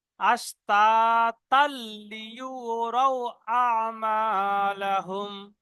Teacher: আর যদি না ছাড়ি, এখানে দম না ছাড়ি, একসঙ্গে ধরে পড়ি, তো এই তানবিনের পরে লাম, ইয়ার মালুনের ঈদগামে তাম হবে। লাম এবং র আসলে ঈদগামে তাম হয়, বিনা গুণনায় মিলিয়ে পড়তে হয়।